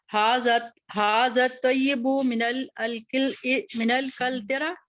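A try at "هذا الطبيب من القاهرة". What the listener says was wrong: नो, दोबारा पढ़िए। तय्यब नहीं है, तबीब है। मिनल तो नहीं है, इन होता है ना, इन हाँ, इन कल तरा।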